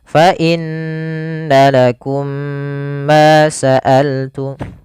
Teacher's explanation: Cara membacanya mim pertama dimasukkan kepada mim kedua dan ditahan. · Kemudian fa inna lakum, adalah fal fa inna lakum, ada huruf nun yang berharokat tasydid, maka kita hukumi dengan bacaan gunnah. Maka di sini kita tasydidkan nunnya dan ditahan suara dengungannya atau suara gunnahnya. Gunnah itu memasukkan suaranya ke rongga hidung. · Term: idgham mimi